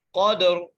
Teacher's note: قاف کو موٹا کر کے پڑھیں گے، قاف کو دال سے ملائیں گے، دال پر قلقلہ کریں گے